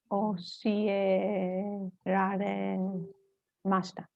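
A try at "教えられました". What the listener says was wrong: Very good.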